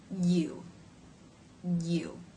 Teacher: Y consonant is acting as a vowel to make this sound the front part of the tongue will push behind the bottom front teeth while the mid front part of the tongue will raise and actually make contact with the roof of the mouth